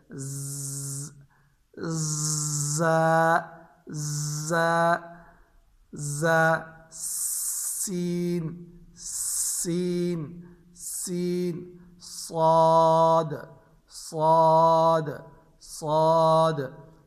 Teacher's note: ज़ा में सख्ती पाई जाती है, सीन में सीटी पाई जाती है और साद में मोटाई पाई जाती है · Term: सीटी वाले हरूफ